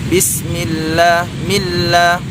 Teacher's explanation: sin mati yang didahului oleh harokat kasrah ditipiskan